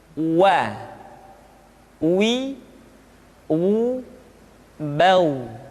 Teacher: huruf Wah diucapkan dengan cara memancungkan dua bibir kita